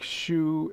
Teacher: the difference is that Shu just sort of starts up more slowly